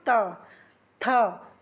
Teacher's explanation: हमारी जीभ कहां टच कर रही है? दांतों को।